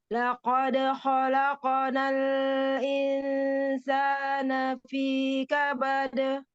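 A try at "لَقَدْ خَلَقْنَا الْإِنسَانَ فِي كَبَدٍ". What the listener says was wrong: Hati-hati, jangan terlalu lama menahan inhirop pada lam sukunnya ya. Bagus disempurnakan inhiropnya disempurnakan, tetapi jangan terlalu lama menahan inhirop bainiyahnya. Sedikit aja ya. Qalqalah apa? Sugro.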